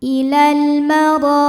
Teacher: Huruf ra dibunyikan secara tafkhim karena ra berbaris fathah. Maka kita baca dengan menebalkannya. Ilal maro. Ra mad thabi'i zhahiri karena ada alif didahului fathah.